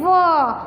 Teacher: ऊपर का दांत होंठ नीचे पर लगेंगे, व इस तरह बोलोगे।